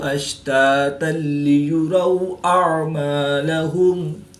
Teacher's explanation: یومئذ یصدر الناس اشتاتا لیروا اعمالهم، حمزہ اور عین حروف قریب الصوت یعنی ملتی جلتی آواز والے حروف میں سے ہیں تو حمزہ کو حلق کے نیچے والے حصہ سے اور عین کو حلق کے درمیان سے ادا کر کے پڑھیں گے